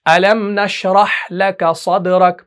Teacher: तो मीम को हम जाहिर करते हैं, हम नहीं करते अलम, इदगाम और इख्फा की सूरत हम नहीं बनाते बल्कि इजहार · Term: इजहार शफवी